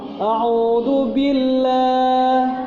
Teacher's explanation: Allah tarqiq. Sebelum lam jalalah berdiri kasroh.